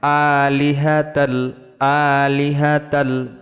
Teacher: হামজা খারা জবর আ, লামজের লি, হা জবর হা, তা লাম দুই জবর তাল। এখানে গুণ্য হবে না, তানবিনের বামে লাম, ঈদগাম বেলা গুণ্য হরফ লাম আসছে।